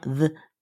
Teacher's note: They may not learn that TH sound, the, and then the E is a schwa or like a short U sound